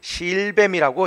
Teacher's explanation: 짧은 소리로 바뀌는 것이고, 이제 첫 번째 음절에 있는 실 이거는 그대로 긴 소리로 발음해서 실뱀이라고 해야 되겠습니다